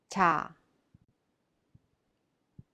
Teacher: Cha is in between soft CH and J, but is not voiced, cha. Cha is aspirated, cha.